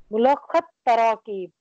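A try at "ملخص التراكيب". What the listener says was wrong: मुलाखसु तराकीब, स्वाद के ऊपर दमा पढ़ना है और दमा को ता के साथ जोड़ना है। मुलाखसुत तराकीब,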